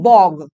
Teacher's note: আমাদের শেষের ক উচ্চারণ করতে অসুবিধা হয় বলে আমরা সেটাকে উচ্চারণ করি গ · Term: ঘোষী ভবন